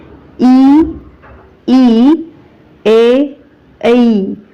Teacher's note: ज्या स्वरांचा उच्चार करतानी जिभेचा अग्रभाग वर उचलला जातो त्याला अग्रस्वर म्हणतात